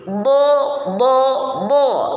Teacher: alat ucap yang digunakan adalah pinggir lidah yang menghadap pada gigi geraham dan gigi geraham bagian atas pinggir lidah yang dimaksud boleh kedua-duanya atau salah satu saja nah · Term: Sisi lidah